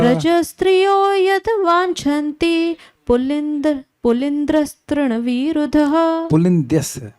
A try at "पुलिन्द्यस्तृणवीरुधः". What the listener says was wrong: पुलिन्द्र नहीं पुलिन्द्यस ओके व्रजस्त्रियो यद् वाञ्छन्ति पुलिन्द्यस्तृणवीरुध